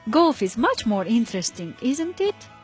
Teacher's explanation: the tone of voice at the end Falls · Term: question tag